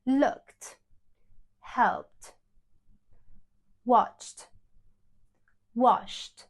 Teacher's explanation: If our root words end in an unvoiced sound, like K, P, S, ch, sh. It sounds like t at the end.